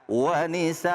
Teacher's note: Wanisa di situ ada mad wajib muttasil. Wajib panjangnya 4 atau 5.